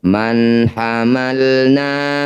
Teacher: Cara bacanya bunyi nun sukun baca jelas, tidak usah dengung.